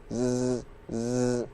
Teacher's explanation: huruf zai salah satu sifat utamanya adalah sofir, yaitu bunyi desis atau bunyi tajam. Maka ketika kita mengucapkan zai, pastikan ada bunyi sofir.